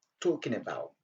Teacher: C'est comme si on avait tout simplement n à la fin et non les g.